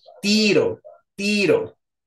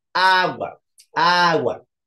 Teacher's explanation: tiene la sílaba tónica en la penúltima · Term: grave